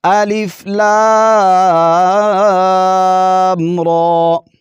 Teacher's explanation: تو یہاں پر لام پر مد کریں گے 3 الف کی مقدار، اور را کو موٹا پڑھیں گے اور اس کو صرف 1 الف کھینچنا ہے، کیونکہ اس پر کھڑا زبر ہے اور اس کو صرف 1 الف کی ہی مقدار کھینچیں گے۔